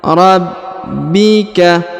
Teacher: huruf ba ditahan dan ditekan dua harakat karena berharakat tasdid